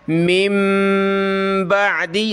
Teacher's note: نون لکھا ہوا ہے لیکن پڑھیں گے نہیں، بلکہ اس کی جگہ ہم نے میم پڑھنی ہے، یعنی اس میم کو ملانا ہے اس میم کے ساتھ اور اس کے بعد با پڑھنی ہے، اور نون ساکن کی وجہ سے ہم نے یہاں ناک میں آواز پیدا کرنی ہے۔